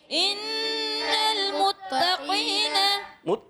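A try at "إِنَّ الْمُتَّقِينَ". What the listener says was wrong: تا باریک مت، یہ تا ہے طانی. ان المتقین ان المتقین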